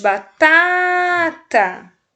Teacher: Viram que o primeiro tá foi a mais forte? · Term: sílaba tônica